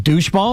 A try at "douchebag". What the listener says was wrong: It's bag, douchebag. Doucheball.